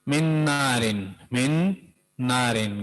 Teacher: نون ساکن، اس کے بعد نارن میں ایک اور نون. ٹھیک ہے، تو پہلا والا نون جو ہے وہ دوسرے نون میں داخل ہوگا، مدغم ہوگا